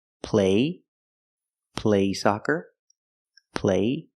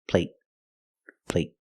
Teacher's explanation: The stop T makes the vowel shorter. They're the same vowel, they're the long A.